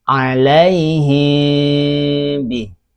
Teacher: Ikhfa syafawi. Jadi ketika mim sukun bertemu dengan huruf ba itu tidak dibaca jelas.